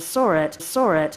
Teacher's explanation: This phenomenon is called the intrusive R, and it's a particular feature of British English and all the other accents of English where R isn't necessarily pronounced all the time